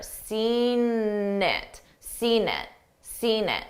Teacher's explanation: I use that that N sound to connect the 2 words together.